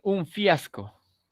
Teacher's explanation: ya tengo los dientes superiores sobre los labios inferiores